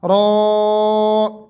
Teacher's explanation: را حروف ان حروفوں میں سے ہے جن کو موٹا پڑھا جاتا ہے، یعنی را کے اوپر جب زبر ہوگی تو اس کو ہم نے موٹا پڑھنا ہے، اس لیے یہاں پر یہ گرین ہے۔